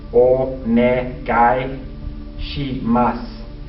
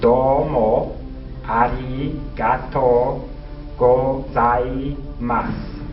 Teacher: is pronounced onegai shimasu, and the U is usually silent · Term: the U is silent